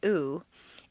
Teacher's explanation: The oo sound is located far forward in the mouth and requires you to round your lips.